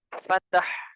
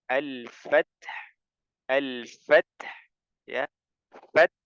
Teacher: huruf Qalqalah sehingga tidak boleh dipantulkan tidak boleh di pantulkan jadi membacanya adalah dengan menghamaskan ta pada pada umumnya seperti biasa tapi ee langsung bunyi huruf ha ya setelahnya · Ta bukan huruf Qalqalah sehingga tidak boleh dipantulkan tidak boleh di pantulkan jadi membacanya adalah dengan menghamaskan ta pada pada umumnya seperti biasa